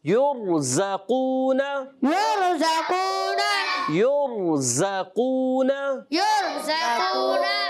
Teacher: زا بھی کلیئر کرنا ہے، قاف موٹا کرنا ہے، را پر کرنا ہے۔